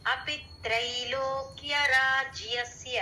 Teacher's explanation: త్రై దగ్గర కొంచెం స్ట్రెస్ ఇచ్చినట్టు